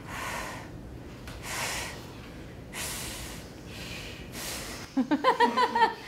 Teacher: it's not being released centrally it's being released laterally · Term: labiodental sound lateral